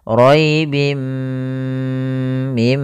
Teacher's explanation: langkahnya adalah memasukkan tanwinnya ke mim dan ditahan gunahnya ribim mim panjangkan dulu Tahan gunahnya dua harakat Kemudian pada lafal